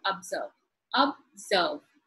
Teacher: test let us look at the word observe observe two syllable it is in the second syllable that the stressed is given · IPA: /əbˈzɜːv/